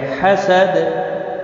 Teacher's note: دال وقف کی صورت میں دال ساکن پڑھا جائے گا، اس پر قلقلہ بھی ہوگا